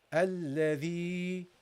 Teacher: you want to prolong the sound of kasra